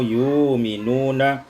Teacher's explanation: tukarkan hamzah dengan waw, yu'minuna. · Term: ibdalul hamzati wawan